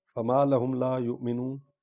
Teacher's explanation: وا پر جو حمزہ ہے اس پر جھٹکا دیں گے۔ ہم نے حمزہ کو پڑھنا ہے کیونکہ حمزہ پر جزم ہے۔